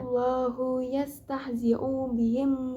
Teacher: Pada ayat 15, pada kalimat Allahu terdapat hukum bacaan takhim karena terdapat lafaz Allah didahului oleh huruf hijaiyah hamzah berharokat fathah, dibaca tebal